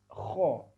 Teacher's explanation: huruf ko dikeluarkan dari pangkal tenggorokan bagian atas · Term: huruf Kha